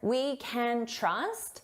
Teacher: When can is the auxiliary verb, so it's not the main verb, we reduce this to kin, and it's very unstressed